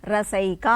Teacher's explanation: అంటే పరమైంది ఏకారం అనేది పరమైంది రస ప్లస్ ఏక కలిసినప్పుడు ఏమైంది అంటే అ కు ఏ పరమైనప్పుడు రెండు మిళితమైపోయి ఐకారం వస్తుంది